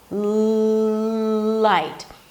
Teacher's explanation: you got to create contact between the tip of the tongue and the upper palate, continuous contact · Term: L sound